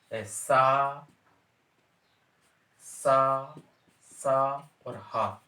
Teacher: सा, सा, सा और हा इन व्यंजनों को ऊष्म या संघर्षी व्यंजन कहा गया है